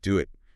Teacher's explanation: The W often pops up when the first vowel is rounded, like ooh or oh. Think do it. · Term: W sound